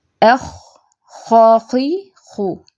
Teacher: ان دونوں حروف کی ادائیگی کے لیے زبان کی جڑ کو اوپر نرم تالو کی طرف اٹھایا جاتا ہے۔ یہ آپ پک میں دیکھ رہے ہیں، یہ جڑ کو نرم تالو کی طرف اوپر اٹھایا ہوا ہے۔ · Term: خاء